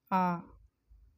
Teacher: जिनके उच्चारण में मुख सबसे अधिक खुलता है